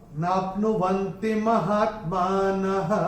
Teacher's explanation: तो विसर्ग का उच्चारण क्योंकि चरण की समाप्ति पे है केवल और केवल ह ही होगा